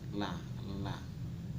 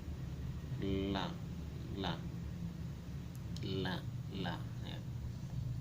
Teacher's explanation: kalau lam dia keluar dari ujung tepi lidah samping kanan atau kiri, kemudian menempati langit-langit mulut yang atas · Jadi ujung lidah harus menempel di langit-langit mulut yang atas, sementara tepinya tepi lidahnya harus condong ke kiri atau kanan.